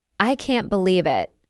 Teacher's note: If you say I can't believe it, with a rising intonation, it shows surprise. If you say I can't believe it, with a falling intonation, it shows disbelief or disappointment.